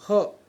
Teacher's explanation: તમે હાથ રાખીને મોઢા પર બોલી જોજો હ અને હાથ રાખીને બોલો તો તમને એમ ગરમ ગરમ ભાપ જેવું નીકળતું લાગે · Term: ઉષ્મ વર્ણ